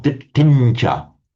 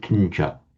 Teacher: It's pronounced at the same point of articulation. So we got this palatal ch, so the ñ is pronounced ditincha.